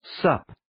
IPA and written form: səp (Sup)